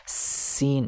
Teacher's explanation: जब सीन कहेंगे तो एक सीटी की आवाज निकलेगी